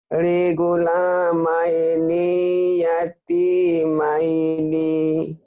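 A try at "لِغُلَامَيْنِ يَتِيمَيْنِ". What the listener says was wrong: Pendek nih ya Bu, diulang. Pendek. Pendek. Pendek. Ni-nya pendek, Bu. Emang ni-nya ada baris panjang ini nih. Pendek.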